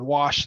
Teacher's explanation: we add the Ed it's still one syllable wash them right just an extra sound that brief T at the very end